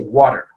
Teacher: I say it with a duh. It's actually kind of more of a between a T and a D in this case, okay, because it's in the middle of a sound · this tap is alveolar, okay? So it's kind of above our teeth, and it's kind of on the ridge of our gums